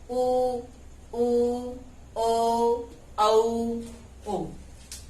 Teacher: जिनको बोलते समय हमारे होठ गोल होते हैं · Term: वृत्ताकार